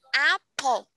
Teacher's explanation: so remember to aspirate the letter P